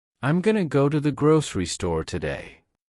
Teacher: I am going to was compressed into I'm going to to the was reduced to a soft lightning fast tu.